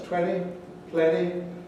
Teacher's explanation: cases where you do get this loss of t at least in london and perhaps more generally in these particular words